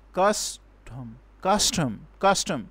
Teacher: first we will give stress on the first syllable on the second syllable there there will be no there will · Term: troche